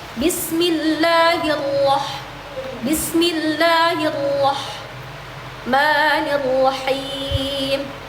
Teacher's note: pengucapan huruf ro yang bertasydid bukanlah dengan memperbanyak getarannya seperti menahan huruf ro ra ro ri r ri ru yang tidak bertas yang tidak bertasydid gitu seperti itu ya, Teman-teman.